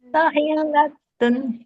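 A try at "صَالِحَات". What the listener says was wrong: Soli bukan sohi, soli. Soli bukan sohi, soli. Awas ketuker.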